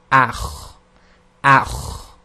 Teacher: So it's this sort of grinding sound, and it's effectively a continual exiting of the air, but you're constricting the windpipe at the same time